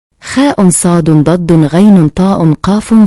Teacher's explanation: Huruf-huruf tersebut memiliki sifat istilah terangkatnya pangkal lidah ke langit-langit mulut sehingga bunyinya terdengar tebal. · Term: huruf istilah